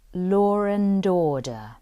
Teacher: a type of linking that involves what we call the intrusive R.